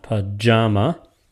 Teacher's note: sometimes, like pajama, it is unstressed, stressed, unstressed